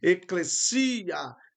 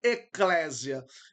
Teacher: Então a palavra tônica fica no final, a sílaba tônica fica no final da palavra, eclesia. Então, essa seria a forma correta de pronunciar e não eclésia.